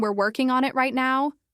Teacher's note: His voice had a rising intonation at the end which made the sentence sound like a question or worse like he was unsure or even being sarcastic.